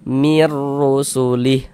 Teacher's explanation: Kemudian pendek saja, mir rusulih. Jangan dibaca mir, jangan dipanjangkan begitu, jangan, pendek saja.